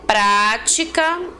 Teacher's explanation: prática é uma palavra que tem acento na antepenúltima sílaba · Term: proparoxítonos